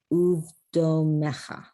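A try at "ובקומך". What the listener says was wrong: Now this is a kuf. Ku. Uv ku mecha.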